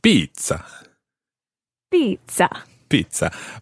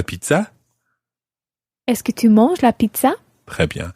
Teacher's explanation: French pizza with the stress on the ah